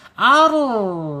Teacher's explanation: Tapi kalau dibaca bergetar itu ee bergetar saja salah karena dia satunya mempunyai sifat inhirab ditarik ke dalam ke belakang ya lidah kita ketika bergetar. Ar gitu tarik.